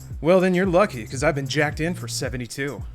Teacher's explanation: it's like kind of breathy slightly southern california